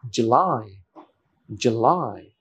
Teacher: এখানে একটা stress আছে, লাই এর পরে, second syllable